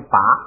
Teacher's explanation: 前边因为那个爬有了前加字就不送气了